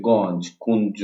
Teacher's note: তাহলে ইয় যোগ বর্গীয় জ যখন আমরা ইয় যোগ বর্গীয় জ দ্বারা যখন আমরা যুক্তাক্ষরটা গঠন করব তখন তার উচ্চারণটা হয় নজ এর মতো